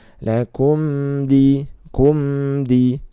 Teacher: Lakum ya, kum di, mim sukun bertemu dal, maka dibaca idharus syafawi, dibaca jelas ya.